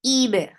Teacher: attach it with ba. And ba will get qalqala and ba will be light. Ib. Ra, 2 counts long and make it heavy because whenever ra is with fatha or dhamma, it is always heavy.